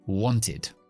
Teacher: Así que esto es want, y como termina en T, la ED va a ser siempre id